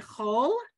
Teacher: that kamatz is going to be what we call a kamatz katan, where it's an o sound versus the a sound